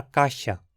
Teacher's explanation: passamos agora para caixa com uma fricativa palatal